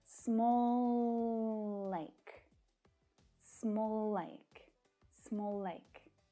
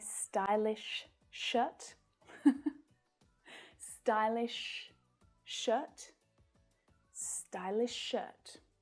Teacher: right so that they become one it's much easier small like there's no pause there at all no break in the sound it's just one continuous sound